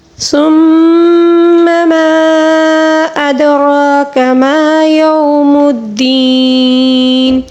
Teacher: ثم یہاں پر غنہ ہے اور ما کے اوپر مد منفصل ہے، اس کو 3 الف کے برابر کھینچ کر پڑھیں گے. ادراک دال کو قلقلے کے ساتھ، را کو پر پڑھیں گے.